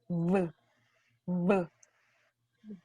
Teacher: You use your teeth, your top teeth, and your lower lip